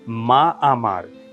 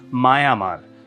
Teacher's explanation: এ দুটো স্বরের উচ্চারণের সুবিধার জন্য একটা ব্যঞ্জন ধ্বনির মতো হয় অন্তস্থ অ আসবে, নয়তো অন্তস্থ ব আসবে। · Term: অন্তস্থ অশ্রুতি